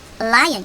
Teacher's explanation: L도 좀 지켜봐야 되는 자음 중에 하나예요. L은 혼자 앞에 있을 때 혀 끝을 천장에 대서 러 소리가 납니다.